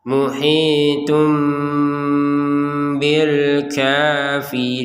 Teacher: Muhitum disertai dengungan. Muhitum tapi tidak 100% ya. Karena ini bukan seperti yang idgham bi gunnah seperti di atasnya ini ya.